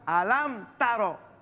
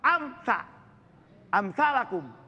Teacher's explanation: dia dibaca langsung dan dimatikan dia punya mim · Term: izhar syafawi